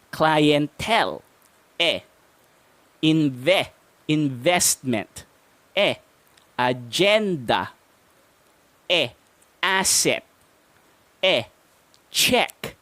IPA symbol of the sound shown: e